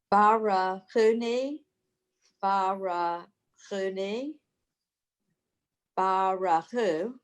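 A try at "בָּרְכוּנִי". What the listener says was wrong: Yes, thank you.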